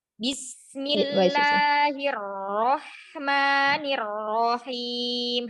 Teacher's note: ada sin dan hak sukun yang mana keduanya memiliki sifat rokhwah ya. Ini harus dialirkan suaranya, tidak boleh syiddah, tidak boleh buru-buru